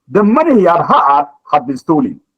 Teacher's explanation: The money he had, the second had will have to stress.